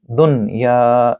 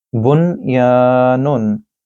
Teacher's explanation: you are not supposed to do ghunna, you have to say noon fully